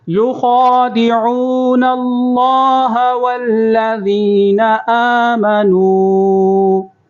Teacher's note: خواہ کو پر کریں گے، عین کی آواز نکالیں گے اور نون کو اللہ کے ساتھ ملائیں گے